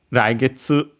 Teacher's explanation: accented on the first one, high and then the rest low. As usual, the rule, the first one is high, then the second one is low, and if the first one is low, then the second one is high.